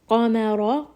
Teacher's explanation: Qaf is heavy, Mim is light, Ra is heavy. So we're going to make sure that we're making that switch from light to heavy back to light.